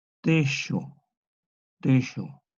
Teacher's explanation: Esta J antigua es una fricativa prepalatal sorda. Se lee techo, techo.